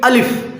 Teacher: الف کا مخرج ہے جوف دہن، یعنی منہ کا خلا۔ منہ کے خالی حصے سے الف ادا ہوتا ہے۔ منہ کا جو خالی حصہ ہے، خالی حصہ، منہ کا خلا جوف دہن، یعنی منہ کا جو بیچ والا حصہ ہے، اس حصے سے الف ادا ہوتا ہے۔